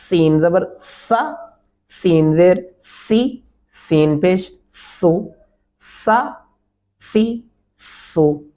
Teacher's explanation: ये दांतों को बंद करके दांतों की बैक साइड पर जबान लगती है जबान की नोक और इसको सीटी की आवाज में पढ़ेंगे